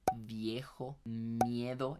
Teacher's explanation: Ese yie que hay por ahí sería un aproximante